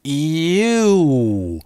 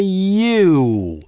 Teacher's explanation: Такая же история с долгим /uː/. Де факто это дифтонг, который приезжает в полноценное русское «у» только в самом конце. А начинается от какого-то другого «у»-образного звука.